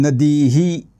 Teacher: उच्चार थोडासा लांबवायचा आहे कारण इ दीर्घ आहे